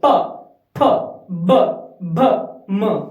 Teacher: प होठ मिलेंगे फटाफट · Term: पवर्ग